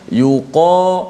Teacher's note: terangkat pangkal lidah menyebabkan suara kita jadi kuat, sifat tu jadi kuat, sifat tebal itu, dan suara kita bergema tu memenuhi ruang mulut kita menghala ke atas.